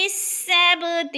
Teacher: سبت با پہ قلقلہ ہو رہا ہے، ہلا کر پڑھنا ہے